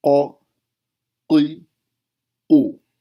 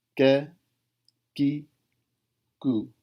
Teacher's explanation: گلے میں چھوٹی زبان ہے اس کے اندرونی حصے سے قاف، اور یہ جو چھوٹی زبان ہے جس کو کوا بھی بولتے ہیں اس کے بیرونی حصے سے کیف